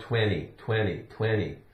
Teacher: we don't even really say the T · really we pronounce the T like a d